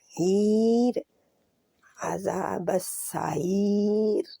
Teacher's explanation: रा को मोटा नहीं पढ़ेंगे, ईर बारीक होगी क्योंकि या के नीचे भी ज़ेर है बेज़ाते खुद और रुकने के लिए इसके ऊपर जज़म लगेगी, तो इससे पहले या जज़म वाली है तो ऑटोमेटिकली ये बारीक रहेगी।